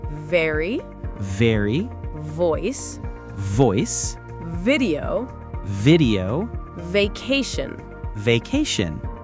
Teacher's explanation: Very, your lips touch together, but for very, your teeth touch your lip. >> Got it. Let's practice some V words.